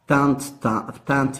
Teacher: on aura T consonantique, un E ouvert nasal, un T consonantique, et le E est aphone, ça veut dire caduc.